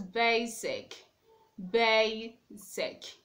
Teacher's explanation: In that word, you have the stress on the first syllable.